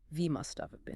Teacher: That have is almost always reduced to the must have been.